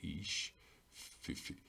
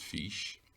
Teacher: Again, I Fada is my first letter I'll pronounce, which is a long vowel, E, and my S is slender, ish, so it's fish. The F is slender, fish, okay, which is the Irish word for a vision. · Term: slender S